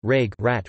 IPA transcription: ˈratʃ